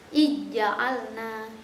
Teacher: Zalnya itu seperti hilang, masuk ke huruf jim. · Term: idgham